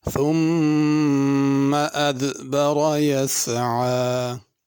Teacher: ثم کی میم پہ غنہ کرنا ہے، ادبر را کو پر پڑھنا ہے، یسعی عین پڑھنی ہے، حمزہ نہیں پڑھنا۔